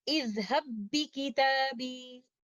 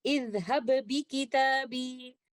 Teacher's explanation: پہلے والے لیٹر با کو ہم قلقلہ کے ساتھ نہیں پڑھیں گے کیونکہ یہاں پر ادغام کامل ہو رہا ہے، پہلے والے لیٹر · نہیں پڑھیں گے کیونکہ یہاں پر ادغام کامل ہو رہا ہے، پہلے والے لیٹر با کا مخرج بھی نہیں رہے گا اور اس کی صفات بھی ختم ہو جائیں گی ، کیونکہ ان دو لفظوں کو ایک دوسرے کے ساتھ ملاتے